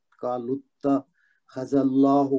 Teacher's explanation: لام کو تا کے ساتھ پڑھیں گے، تا پہ تشدید ہے تو اس پہ شد ہے تو اس کو تحقیق زور دے کے پڑھیں گے. قالوا اتخذ اللہ میں اللہ کا لام موٹا پڑھا جائے گا، اس سے پہلے والے حرف پہ زال پہ زبر ہے